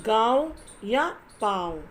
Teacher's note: अनुनासिक, इसका उच्चारण नाक और गले दोनों से होता है और इसके साथ लगती है ये चिन्ह चंद्र बिंदु का चिन्ह।